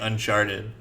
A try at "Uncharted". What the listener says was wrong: It sounds like you're just pronouncing the CH of Uncharted like as an SH. Uncharted.